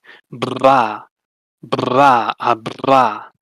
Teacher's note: So first, you have the bilabial trill with your lips